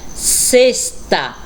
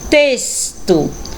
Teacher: na pronúncia dessas palavras o x realmente ele tem um som de s